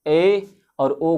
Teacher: और यदि समृद्ध की बात करें, अर्ध समृद्ध की बात करें तो इसमें क्या होता है, मुख द्वार आधा बंद रहता है, मुख द्वार लगभग आधा बंद रहता है